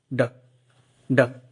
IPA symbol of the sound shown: d